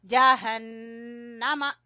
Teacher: नून मुशद्दद का गुन्ना अदा करेंगे